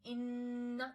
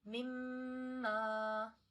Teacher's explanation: And nose is used for ghunna. The way we say inna, this sound is in the nose, it's not in the mouth. Mimma, this sound is in the nose.